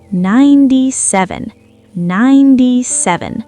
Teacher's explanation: 7 has sev, n, 2 syllables, but when we say 97, the second syllable basically disappears. Listen, 7. It's super short.